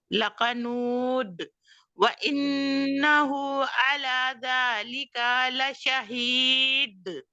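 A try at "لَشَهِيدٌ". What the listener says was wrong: नहीं, बहुत सख्ती से शहीद, एक तो ही को बहुत नहीं खींचना, दो अलिफ ही है, दो हरकत। शहीद, ला शहीद। दाल को सख्ती के साथ मत छोड़े प्लीज। ला शहीद,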